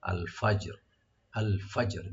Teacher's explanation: জিমটাকে একটু হালকা কলকলা করতে হবে আর রা সাকিন হয়ে যাবে ওয়াকফের কারণে